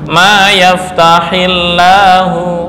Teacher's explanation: cara membacanya lam pada lafzul jalalah adalah dibaca dengan tarkik